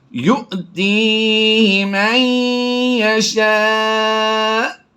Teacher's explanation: حمزہ کو فالو کرتے ہوئے حمزہ ساکنہ کی وجہ سے جھٹکا دے کر پڑھیں گے۔ حمزہ ساکنہ کہتے ہیں حمزہ کے اوپر جزم آ جائے یا الف کے اوپر جزم آ جائے، اسے حمزہ ساکنہ کہا جاتا ہے، تو اسے جھٹکا دے کر پڑھنا ہے۔